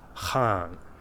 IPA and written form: xaːŋ (Khan)